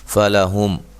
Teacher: یہاں میم ساکن کا اظہار ہوگا، غنہ نہیں کریں گے